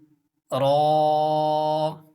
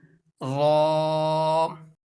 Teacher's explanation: जब जुबान की नोक तालू के सामने वाले हिस्से पर लगेगी टच होगी तो यहां से रो अदा होगा